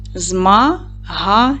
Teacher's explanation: Змагання падає на другий склад. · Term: наголос